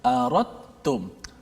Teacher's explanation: Sebab huruf da dengan ta ni sama jenis, iaitu hujung lidah berada di pangkal gigi atas. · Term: idgham mutajanisain